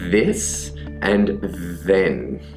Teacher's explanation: The second sound that we're looking at today is the voiced dental fricative, which is pronounced by doing the same thing, the tongue between the teeth and blowing air out, but also by creating voice or sound from the throat. So instead we get the sound th.